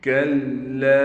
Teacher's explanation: لام پر ٹھہراؤ کیا جائے گا، لام کے بعد الف پر مد ہے لہٰذا لام کو 3 الف کی مقدار کھینچ کر بھی پڑھیں گے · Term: تشدید